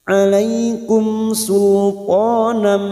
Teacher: mim sukun di baca jelas tanpa mendengung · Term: zhar syafawi